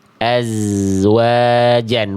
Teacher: Makanya enggak boleh putus bunyi zainnya karena dia punya sifat suara yang mengalir gitu ya. Maka tidak boleh putus dia. · Bunyi aznya diantar sampai ke huruf wawunya ketika dilafalkan wawu.